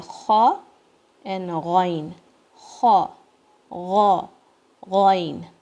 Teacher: Can you feel it? Then from the top of the throat, you say kha and ghain. Kha, gha, ghain.